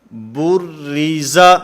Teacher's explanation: تو یہاں پر بھی کیونکہ را کے نیچے کسرہ ہے، زیر ہے، اس وجہ سے اس را کو باریک پڑھا جائے گا، اس را کو پر نہیں پڑھا جائے گا.